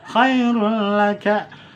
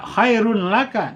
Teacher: Sekali lagi, lam dan ro itu tidak ada guna, tidak ditahan. Dileburkan hurufnya, nunnya melebur ke huruf lam, tanwinnya melebur ke huruf lam dan ro tanpa ada penahanan atau guna. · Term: idgham